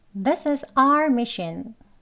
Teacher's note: 여기 this is를요, 이렇게 조금 연음해가지고요, 짧게 이어서 발음하시면 돼요.